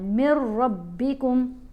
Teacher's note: میم کو جب را سے ملانا ہے نا تو یہاں پر غنہ نہیں ہوگا